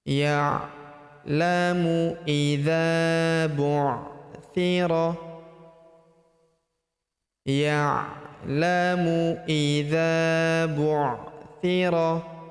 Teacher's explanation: Huruf dza kita panjangkan dua harakat. Karena terdapat tanda alif di depannya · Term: panjangkan 2 harokat